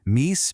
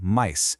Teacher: They started moving up in the mouth. So that long E sound slowly migrated and became the I sound we know today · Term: great vowel shift